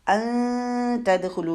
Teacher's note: تو جب بھی نون کا اخفاء کا رول ہوتا ہے، نون ساکن کے بعد والے حرف کے مخرج کے قریب جا کے نون کی آواز کو چھپانا ہے، بالکل باریک رکھنا ہے اخفاء کو، کیونکہ آگے حرف باریک آ رہا ہے